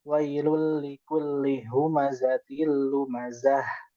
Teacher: Itu dari eh, pangkal tenggorokan huruf hamzah dan ha